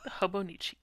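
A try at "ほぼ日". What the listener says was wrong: You're saying Hobonichi. I'm saying Hobonichi. So I'm emphasizing the chi. You're emphasizing the ho.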